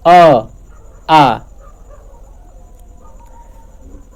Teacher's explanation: मुख का कोई भी ऐसा भाग नहीं है जो कि टच करे यानी कि आपका यह कंठ से आवाज निकलती है